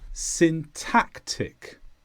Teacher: the stress is on tack